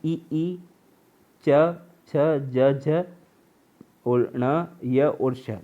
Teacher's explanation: इनका साउंड आता है तालव्य से या तालु से